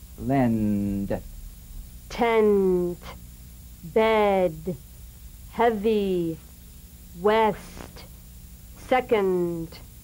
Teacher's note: Neutral 3, as in lend. Really keep the vowel short, play consonant to consonant.